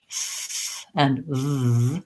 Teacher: And when I'm making the F and the V sounds, what I should notice is that nothing really needs to change with my articulation of the sound, meaning nothing needs to change with the position of my mouth. So for both sounds, my lip and teeth touch, f and v. You might find it easier to do that for the f sound because you don't have to have your voice on, and it's easier to get that air to flow.